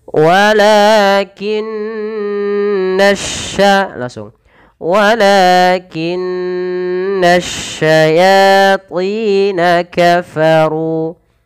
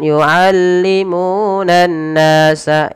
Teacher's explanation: Tahankan suara nun karena dia ada bacaan gunnah pada lafal nun berharakat tasydid